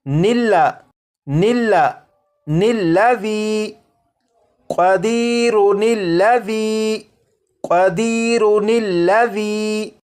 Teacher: یہ جو الف اور اس کے اوپر جو زبر ہے یعنی یہ جو حمزہ ہے اسے نہیں پڑھیں گے بلکہ نون کو لام کے ساتھ ملا کر پڑھیں گے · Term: نون قطنی